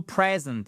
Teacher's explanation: Present, accent tonique sur la première syllabe.